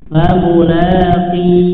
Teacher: qaf jangan sampai ada nafas yang mengalir ya. Kalau misalkan ada nafas yang mengalir bisa berubah menjadi huruf kaf ya, fa mula ki ya, tapi kaf memiliki sifat syiddah ya, memiliki sifat syiddah dan jahar ya, fa mula ki ya.